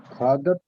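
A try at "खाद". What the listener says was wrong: This is Khad. Halanta is there, right? So that is Khad. If there is no Halanta in Sanskrit, you have to say the full form.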